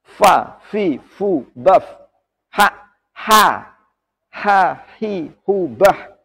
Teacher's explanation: Kalau jahar artinya menahan nafas atau udara atau jelas atau kuat, hamas kebalikannya, mengalirkan nafas. Nafasnya keluar ketika mengucapkan huruf-huruf hamas ini. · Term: sifat hamas